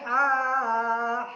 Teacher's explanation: حلق سے نکلے گا یہ ہا